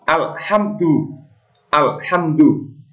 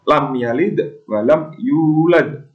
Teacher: Alhamdu. Tidak boleh dibaca dengung. Misalkan alhamdu, itu salah. Mimnya seperti ditekan. Alhamdu. Nah, terdapat mim mati bertemu huruf dal. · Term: idhar syafawi